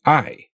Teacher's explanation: the English diphthong doesn't take you all the way up to the tongue position of E